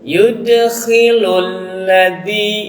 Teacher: dibaca panjang 2 harakat, hukumnya adalah mad tabi'i